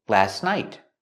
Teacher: When you link the words, you don't hear the T.